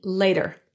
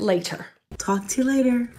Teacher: the T in the word later is actually pronounced as a lingual flap T so it will sound more like a d